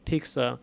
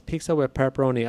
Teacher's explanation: if you put your hand in front of your mouth, if you're talking regularly and you say pizza, you're going to feel that extra wind. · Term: plosives